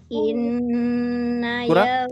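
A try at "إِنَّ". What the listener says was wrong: Kurang turun. Masih terlalu tinggi, ya.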